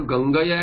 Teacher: Gangaya is Hraswa and has no Visarga